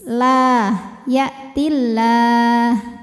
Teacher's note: Ya'tillah, lam pada lafaz Allah dibunyikan secara tartik karena harokat huruf sebelumnya berbaris kasroh, maka lamnya ini tipis